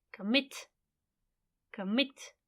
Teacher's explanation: on the last syllable when it is on the last syllable the stress is on the last syllable